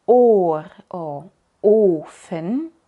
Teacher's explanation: o ofen pero cuando es larga como en or o uen no solo cambia la duración sino el sonido el sonido se hace como algo entre una o corta y una u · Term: o larga